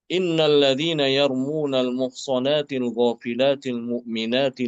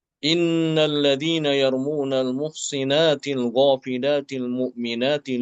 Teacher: Untuk Imam Al-Kisai dengan mengkasrokan huruf sod.